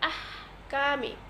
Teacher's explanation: হামস করে পড়তে হবে, অর্থাৎ হালকা বাতাস বের করে পড়তে হবে